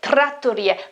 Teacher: we know that the sound is quite strong in italian and we have a double t here so the the consonant is longer